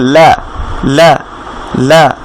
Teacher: লামের মাখরাজটা যদি আমরা এখানে খেয়াল করি, লামটা হচ্ছে আপনার জিহ্বার আগার দিকটা, অর্থাৎ জিহ্বার আগার সাইডের দিকটা আপনার উপরের তালুর সাথে লাগবে